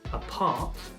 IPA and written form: əˈpɑːt (Apart)